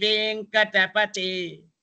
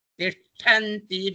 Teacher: the second one is pronounced from the tip of the tongue, and the first one is pronounced from the middle of the tongue, upper palate with a lot of strength